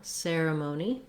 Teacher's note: we do have a little secondary stress on that mo syllable, ceremony, because we have that clear O vowel. And then finally letter E says the E, letter Y that is, says the E sound in ceremony.